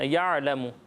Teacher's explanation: دیکھیں, سب سے پہلے یہ آپ نے خیال رکھنا ہے کہ یعلم نہیں ہے. ٹھیک ہے, یہ عین ساکن ہے, یہاں جھٹکا بھی نہیں دینا اور اس پر زبر بھی نہیں پڑھنا. یعلم. ٹھیک ہے, اور قاف کو پر پڑھنا ہے آپ نے, قاف کو باریک نہیں پڑھیں گے.